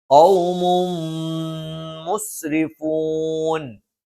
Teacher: ഖൗമും മുസ്രിഫൂൻ, ഖൗമുൻ, തൻവീനു ശേഷം മീമു വന്നു, ഇദ്ഗാമും ബിഗുന്നയാണ്. തൻവീനിന് ശേഷമുള്ള മീമിലേക്ക് ചേർത്ത് മണിച്ചുകൊണ്ട് ഉച്ചരിക്കും.